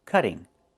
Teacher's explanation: Move the stress to the first syllable.